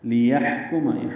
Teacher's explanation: ہا وسط حلق سے ادا کریں گے